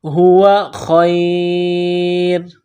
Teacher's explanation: را کے اوپر 2 پیش تنوین ہے تو یہاں پر جب وقف کریں گے تو را کو سائلنٹ کریں گے